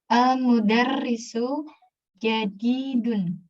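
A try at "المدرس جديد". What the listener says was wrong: Ahsanti.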